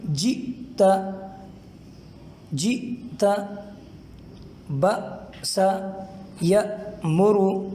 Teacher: دیکھیں جیتا، اگر کوئی یوں پڑھے جیتا تو یہ غلط ہے، اور اس کے درست ادائیگی کی نشانی یہ ہے کہ حمزہ ساکن کو ادا کرتے وقت تھوڑی دیر کے لیے آواز رک جائے گی اور سانس جاری رہے گی۔ ذرا دیکھیں جیتا، جیتا، بسا یا مرو، سختی بھی ہوگی آواز کے اندر اور جھٹکا بھی ہوگا حمزہ ساکن کو ادا کرتے وقت، اور تھوڑی دیر کے لیے آواز بھی رک جائے گی۔